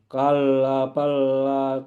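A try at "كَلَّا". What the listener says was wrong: kalla panjang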